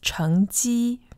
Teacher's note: the pronunciation in Taiwan is 成绩, second tone, first tone.